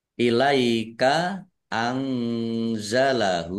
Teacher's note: nun sukun bertemu dengan huruf za juga ini bacaan ikhfa, dibaca samar-samar